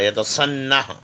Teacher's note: سین whistling sound ہے، زبان کی نوک اور اوپر کے دونوں جو دانت ہے سامنے کے ان کا اندرونی حصہ